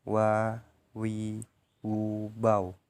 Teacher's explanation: melafalkan huruf wa, diucapkan dengan mengumpulkan dua bibir.